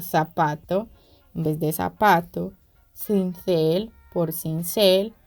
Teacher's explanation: Por último, tenemos el ceseo o la pérdida de la distinción fonológica de la fricativa interdental Z por la alveolar S